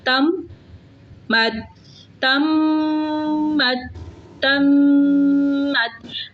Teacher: میم کا مخرج دونوں ہونٹوں کے خشکی والے حصے سے میم ادا ہوتا ہے